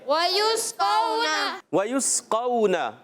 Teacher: وَيُسْقَوْنَ، یا کو سین سے ملائیں گے، یوس، یہاں یا پر بھی ہونٹ گول رہیں گے کیونکہ پیش ہے، اور سین سیٹی کے ساتھ ادا ہوگا · پہلا حرف ہے واو، ادائیگی ہوگی ہونٹوں کی گولائی سے